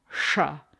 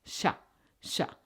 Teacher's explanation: the retroflex cerebral sound shrah versus the palatal sound sha sha which is the sound we use most often in sanskrit